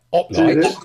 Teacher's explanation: The H is actually silent.